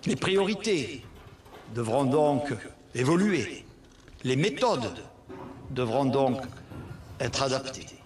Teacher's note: Mr. Castex speaks with a southwestern twang. A twang is a nasal sound, which is sometimes obvious and frequently used in some dialects or accents.